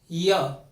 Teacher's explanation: य कहां से बोला जाएगा, कंठ से · र मूर्धा से, ल दंत से, दांतों से, और व होठों से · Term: अंतस्थ व्यंजन